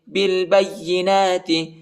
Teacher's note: جَاءَكُم مُوسَىٰ بالبینات، با کو لام کے ساتھ ملائیں گے، الف نہیں پڑھا جاتا، الف کے اوپر حرکت نہیں ہے، اور با کو یا کے ساتھ ملائیں گے، یا کو شدت کے ساتھ، سختی کے ساتھ پڑھیں گے، ٹھیک ہے۔ اور نون پر کھڑا زبر آیا ہے، اس کو ایک الف کی مقدار تک کھینچیں گے۔